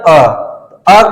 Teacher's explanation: अ बोलने पर ना जीव आपका आगे जा रहा है ना आगे पीछे जा रहा है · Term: मध्य, मध्य स्वर